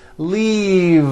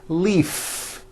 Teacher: throughout the whole word and voice the V leave like that if you stop the voicing at the end of the vowel e then you would be saying leaf with an unvoiced f and the word we're trying to say is leave with that